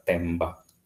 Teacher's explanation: Jadi ada struktur bunyi M dan B yang sama-sama kita ketahui bahwa M dan B itu sama-sama bilabial